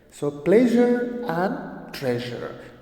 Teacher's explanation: the sound is j, which is a voice sound, voice palatal sound.